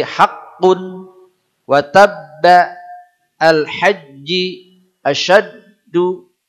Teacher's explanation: Atau memang aslinya begitu, ada dua-dua huruf. Maksudnya terjadi tekanan dulu pada huruf yang pertama, baru qalqalah pada huruf yang kedua.